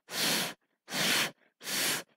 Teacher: the sound of letter F is voiceless because we don't use our sound box to to say this sound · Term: F sound